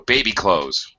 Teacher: drop the TH completely, bye-bye, and simply pronounce it as close, just like close the door. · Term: reduce pronunciation